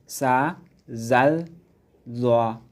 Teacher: জিহ্বার অগ্রভাগ সামনের নিচের 2 দাঁতের শেষ ভাগে লাগিয়ে পড়তে হয় জা, সিন, সোয়াদ। জিহ্বার অগ্রভাগ সামনের উপরের 2 দাঁতের অগ্রভাগের সঙ্গে লাগিয়ে পড়তে হয়